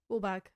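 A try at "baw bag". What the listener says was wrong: And he went, no, boh. Boh bag. Boh. Not lull. Boh.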